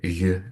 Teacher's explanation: this velar approximant g, which notably is phonetically different from the borrowed Persian or Pashto r